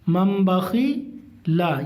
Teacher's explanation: تنوین یا نون ساکن کے بعد با آئے تو نون کو میم سے بدل کر غنہ اور اخفا کے ساتھ پڑھیں گے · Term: اقلاب